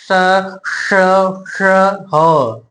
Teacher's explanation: ये अंदर रगड़ खाकर निकलती है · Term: उष्म व्यंजन